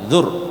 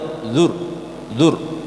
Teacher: Tapi kalau rok yang tebal dan rok tipis itu getarannya cuma sekali, kayak orang, bukan seperti orang itu ya, bukan seperti orang yang cadel, bukan, tapi dia tuh bergetar tetap R-nya tapi sekali saja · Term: rok tebal